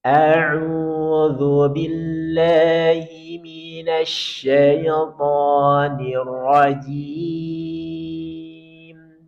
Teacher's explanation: Kita mulai dengan taawud nada satu naik.